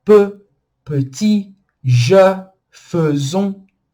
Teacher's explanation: E fechado. Boca do O, som de E, fica E, E.